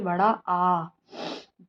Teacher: विवृत का मतलब होता है जिसको बोलने के लिए मुंह अत्यधिक खुलता हो